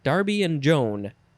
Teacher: the pronunciation guide says that the and word is just un or an. There's no D sound in there · put the d sound in there darby and joan maybe because you say it quickly like that you don't really get the d sound